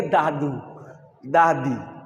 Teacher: জিভের ডগা, উপরের দাঁতের গোড়া, ওইখান থেকে দাদু, দাদি, নানা জিভের ডগা আর একটু উপরের তেলের দিকে লাগাতে হচ্ছে।